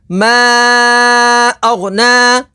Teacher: اور غین حروف مستعلیہ میں سے ہے اسے پوری یعنی موٹا پڑھیں گے. نون کے اوپر کھڑی حرکات ہے اسے لمبا کر کے پڑھیں گے.